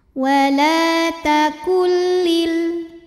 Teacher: bila gunah karena ada nun sukun yang menghadapi huruf lam maka nunnya masuk ke lam tanpa disertai dengungan jadi ini enggak perlu ditahan cukup ditekan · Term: idgham bila gunah, idgham bila gunnah